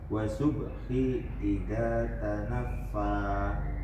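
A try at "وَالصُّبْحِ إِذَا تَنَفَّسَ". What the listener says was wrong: Jangan dipanjangin. Tanafas. Ulangi.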